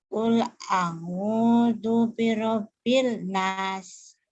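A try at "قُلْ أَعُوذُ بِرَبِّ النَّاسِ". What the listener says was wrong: Jangan bin, L-nya enggak, L ini enggak dibaca. Kul, coba dengerin lagi, ikutin lagi. Kul a'udzu birabbin nas. Birabbin. Birabbin nas. Jangan birobil, L-nya jangan dibaca. Birabbin nas. Kul a'udzu birabbin nas.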